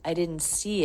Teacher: Right from the N into the S sound with no break, no stop, no lift.